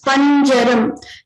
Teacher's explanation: The Utpatti Sthana of Nya and Ja are Talu. The Talu is a palate. So both of them come from the same place.